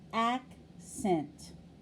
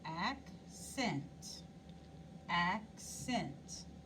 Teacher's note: and see if i said it louder or softer accent so we said the first syllable longer and louder and higher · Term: accenting the syllable